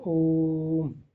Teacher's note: कुल स्वर में तीन मात्रा का समय लगने लगता है। जैसे ओम का उच्चारण करते तो हो जाता है ओम।